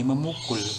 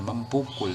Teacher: Kalau B fonemnya tidak luluh, tetapi kalau P nanti dia akan luluh ya.